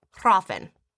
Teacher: with a little bit of a trill R again, you know. And the F is supposed to be kind of like a V, hrafen.